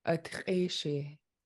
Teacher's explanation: So it'll be gravelly in the back of your throat, but also pinched, so kind of sharp.